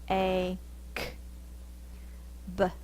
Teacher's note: My lips are together. B. And it pops the air.